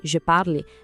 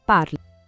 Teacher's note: essa terminação E é muda. O som morre no L, parle. A diferença é sutil, mas crucial. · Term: E mudo